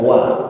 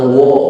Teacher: waw dipatah dibaca wa, bukan wo